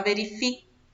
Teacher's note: Aqui na palavra verifique, não sai o som do U.